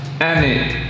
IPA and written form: æ nɪt (and it)